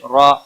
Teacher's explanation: را، خڑی زبر کی وجہ سے ایک الف کے برابر کھینچ کر پڑھیں گے۔ وقف کی صورت میں بھی ایک الف کے برابر ہی کھینچ کر وقف ہوگا۔